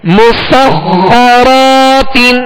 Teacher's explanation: را کے آگے الف مدہ ہے، 1 الف کی مقدار میں کھینچ کر ادا کریں گے